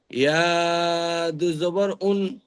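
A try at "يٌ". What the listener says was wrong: জাবার না, ইয়া দু পেশ ইউন। মিমের ওপরে দু পেশ আছে, বলুন।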